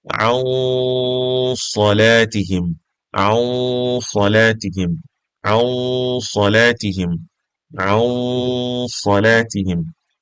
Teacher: So as you can see, when pronouncing إخفاء, we're concealing the sound of, we're concealing our noon, and then we're pronouncing صاد